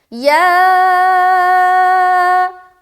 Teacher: کھڑا زبر بھی ہے اور مد بھی ہے، تو 3 سے 4 الف کھینچنا ہے اور یہ حرف مد کے بعد حمزہ اسی کلمے میں ہے۔